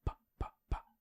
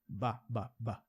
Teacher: Então, se você fala par, par e bar, a diferença é que par, pa, pa, pa, não tem som. Ba, ba, ba, tem som na garganta.